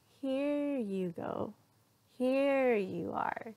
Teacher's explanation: So notice that my tone when I say, here you go, here you go, or here you are, okay, so watch that tone go up and then come down